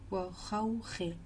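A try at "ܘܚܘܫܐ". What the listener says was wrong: C'est pas wa, c'est ou. Ou khaouché.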